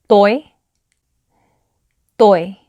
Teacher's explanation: toy is made by placing the front part of your tongue and laying it right along the back part of your top set of teeth. So it's toy, toy.